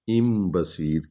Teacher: ان بصیر نہیں پڑھیں گے، ام بصیر کیونکہ آگے با آ رہا ہے